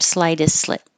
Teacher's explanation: You can keep that there, slightest slit, or just skip the T because you have two S's so close to each other that the T can drop